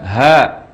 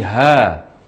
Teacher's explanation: huruf H dibaca Dua harokat tanpa imbuhan hamzah zahirnya Jadi ha bukan hak bukan hak tapi ha jadikan juga